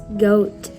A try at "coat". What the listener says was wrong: Look at that first sound again.